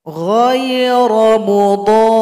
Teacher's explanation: Jadi dhad panjangkan dulu 6 ketukan, baru ditekan kepada huruf ra. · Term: huruf ra yang bertasydid